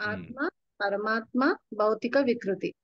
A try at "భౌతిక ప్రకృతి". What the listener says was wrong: ప్రకృతి వికృతి కాదు.